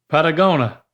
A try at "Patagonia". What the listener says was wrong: There's an I in there before that last A. Do you see that I? N-I-A. No. Patagonia. There's one more syllable. No. You were right. No, you were right before, except you left the A off.